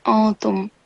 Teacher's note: to perform the rule of ikhfa, so the noon will be silent